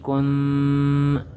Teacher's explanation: ہم آواز کو ناک میں چھپا کر پڑھیں گے اور ایک الف کے برابر لمبا کریں گے۔ کاف نون پیش کن، مطلب غنہ کر کے پڑھیں گے۔ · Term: اخفا